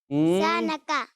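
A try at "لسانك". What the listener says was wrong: اچھا یہ ثا نہیں ہے, سین ہے, سیٹی آتی ہے اس میں. زبان کہاں لگے گی؟ دانتوں میں نہیں لگے گی ایسے, ٹھیک ہے. لسانکا.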